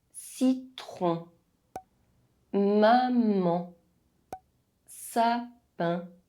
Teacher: all of their spellings include an N or an M, but they are not pronounced. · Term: nasal vowels